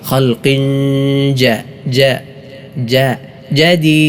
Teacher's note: ഹ ഹ ആണ് ഹൽഖിൻ ഹൽഖിൻ ഹൽഖി കാഫ് ശ്രദ്ധിക്കണം ഹൽഖിൻ ജ മണിക്കണം ഹൽഖിൻ കാഫിന് തൻവീനാണ് ശേഷം ജീം വന്നു ഇഹ്ഫാ ചെയ്യണം